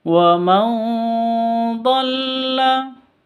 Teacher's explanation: Di sini ada nun mati bertemu dengan dhad. Cara bacanya samar didengungkan, siap-siap ke huruf dotnya